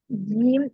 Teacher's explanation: നമ്മുടെ നാവിന്റെ നടുഭാഗം മുകളിലേക്ക് തട്ടിച്ചിട്ടാണ് ജീൻ എന്ന് പറയുന്നത്